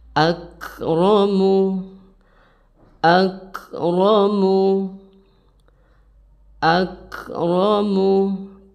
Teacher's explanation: huruf Kaf harus berdesis atau berhembus